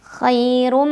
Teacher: Ra-nya dibunyikan secara tafkhim karena ra berbaris dan barisnya dhammah tanwin. Maka cara membacanya adalah ditebalkan.